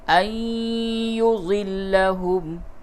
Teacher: نون ساکن کے بعد یا ہے ادغام مع الغنہ ہوگا